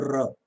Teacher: तो र आप देखेंगे कि र उसी जगह उच्चारित हो रहा है, टंग हल्की सी मुड़ती है और tip of the tongue pre पैलेट से टकराता है, लेकिन ट की तरह एक बार नहीं टकराता है, वो कई बार टकराता है। वो इसीलिए इसको ट्रिल्ड एंड रोल्ड साउंड कहते हैं, कंपित लुंठित ध्वनि कहते हैं इसको, कि ये कांपती भी है और मुड़ती भी है।